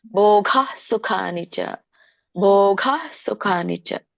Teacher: ಭೋಗ ಭೋಗ ಸ್ವಲ್ಪ ಅಲ್ಲಿ ಹ ಬರುಹಾಗೆ ನೋಡಕೊಳ್ಳಿ